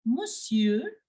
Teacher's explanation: here the N is silent